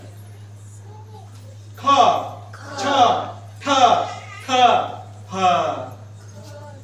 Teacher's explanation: ज्या वर्णांचा उच्चार करण्याकरिता जास्त शक्ती लागते त्या वर्णांना महाप्राण वर्ण असे म्हणतात